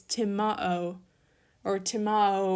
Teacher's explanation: you have what's not exactly a diphthong, but you're combining two vowels